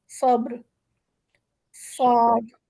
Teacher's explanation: ٹھیک ہے، صاد کی آواز موٹی ہوتی ہے، سیٹی یہاں پہ لکھا ہے سیٹی والی ہوتی ہے، لیکن دراصل وہ ایک ہولو منہ سے نکلتی ہے، یعنی جب ہماری زبان کہیں پر بھی ٹچ نہیں ہو رہی ہوتی تو صاد کی آواز نکلتی ہے، یعنی زبان کی جو نوک ہے وہ کہیں پر بھی منہ کے اندر ٹچ نہیں ہو رہی تو صاد کی موٹی سی بولڈ آواز نکلتی ہے